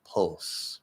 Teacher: I'm just going to do that half L, the dark L. But we don't want to hear a T in there. Especially because it's that half L and the L actually isn't coming up.